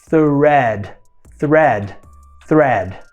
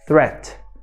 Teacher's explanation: A primeira diferença é visível, o D no final e o T no final. O D tem um som vozeado, ou seja, há uma vibração nas pregas vocais